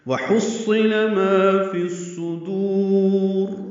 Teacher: واو ہونٹوں کی نا تمام گلائی سے ادا کریں گے